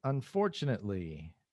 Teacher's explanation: the stressed syllable is for